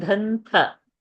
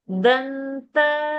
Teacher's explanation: Dhanta. Not dha. Alpa prana. Less pressure.